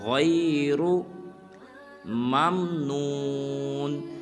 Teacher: غین کو بھی پر ادا کرنا ہے اور را کو بھی پر ادا کرنا ہے